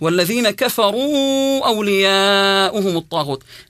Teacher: المد الاول مد جائز منفصل يمد بمقدار حركتين او اربع او خمس حركات